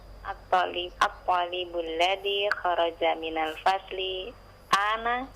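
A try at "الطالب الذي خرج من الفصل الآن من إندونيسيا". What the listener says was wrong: Minal faslil. Iya, ada alif lam di situ. Minal faslil ana.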